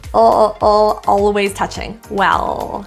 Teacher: the tongue tip curl and your tongue pull back first well the L is the main issue here feeling your tongue tip go up to the roof